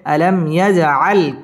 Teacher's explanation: মিম সাকিন ইজহারে খাস ইয়াজ জিম কলকলার হরফ ধাক্কা দিয়ে পড়তে হবে। আলাম ইয়াজআল কাই জবরের বাম পাশে জজম ওয়ালা ইয়া লিনের হরফ তাড়াতাড়ি পড়তে হবে।